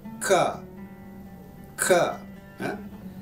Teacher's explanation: pangkal lidah menyentuh ke langit belakang